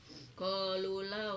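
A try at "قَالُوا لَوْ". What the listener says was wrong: Panjangkan qalu.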